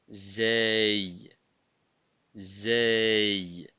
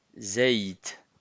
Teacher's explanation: La sortie de la lettre Zey, le bout de la langue est en appui sur le devant des incisives inférieures, donc des dents inférieures. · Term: le son Z